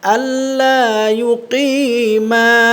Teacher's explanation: মিম দুই ঠোঁটের শুকনা জায়গা থেকে উচ্চারণ হয়